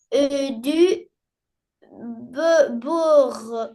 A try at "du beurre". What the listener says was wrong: beurre, bravo. Et du beurre, oui.